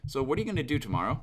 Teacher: I have that slight rising in the intonation at the end to symbolize a question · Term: rising intonation